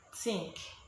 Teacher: The voiceless TH, we usually give it the sound T.